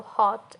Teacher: It's a short vowel and not rounded strongly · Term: lot vowel